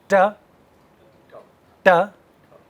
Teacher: So, what is happening with the tongue? It is bending backwards. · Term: retroflex, retroflex sounds